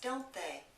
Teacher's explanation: Notice the T in aren't is not pronounced. When we have a negative contraction in the tag, the T is going to be silent. · So the T in don't is silent.